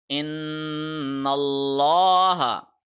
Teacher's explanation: نون کے اوپر ہم نے غنہ کیا کیونکہ نون کے اوپر تشدید ہے ، ہم نے زبان کو منہ کی چھت کے ساتھ ایک